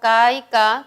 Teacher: En caóticos encontramos ka y ka, que son oclusivas sordas.